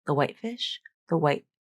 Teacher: She doesn't just stop her voicing. She abruptly ends the voicing with a glottal stop, and that glottal stop is the T.